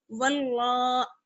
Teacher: ہم لام سے ملائیں گے اور موٹا کر کے ملائیں گے. واو لام زبر ول، لام کھڑا زبر لا، واللہ.